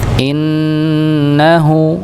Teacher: yaitu ghunah musyaddadah didengungkan